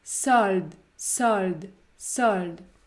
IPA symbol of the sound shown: ɔ